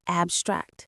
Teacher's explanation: As a verb, the stress goes on the second syllable, abstract.